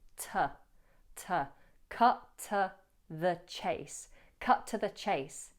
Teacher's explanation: You might also notice that the to, the vowel is weak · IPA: /tə/